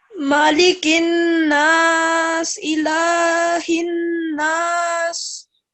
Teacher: you're supposed to hold them for 2 seconds and produce a nasal sound. That means the sound comes from your nose.